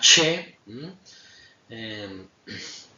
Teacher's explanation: A continuación tendríamos las retroflejas alveopalatales, es decir, la punta de la lengua se va a acercar a los alveolos, con lo cual la posición de la lengua queda así como un poco retrofleja